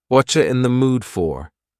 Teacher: the word you has been reduced to cha